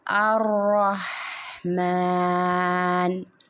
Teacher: را کی تشدید کو مضبوطی سے پڑھا جائے گا، ہا کو حلق سے ادا کیا جائے گا، اور میم کی جو کھڑی الف ہے اس کو ایک الف کی مقدار کھینچ کے پڑھا جائے گا۔ الرحمن، ہا کی ادائیگی حلق سے کرنی ہے، حلق کے درمیانی حصے سے